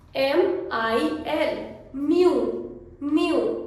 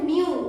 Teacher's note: कोई भी word L से एंड होता है तो उसका एंड का साउंड हम ल को प्रोनाउंस नहीं करते हैं, ल का उच्चारण नहीं आता है